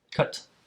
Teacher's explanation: cut is stressed but we can't really make the sound much longer it's just a strong sound